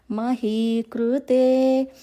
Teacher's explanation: ఆ లెటర్ ని కూడా రెడ్ కలర్ లో మెన్షన్ చేశాను అలా వచ్చినప్పుడు రకారం చదివినట్టు చదవకుండా అరుకారం సౌండ్ చదవాలి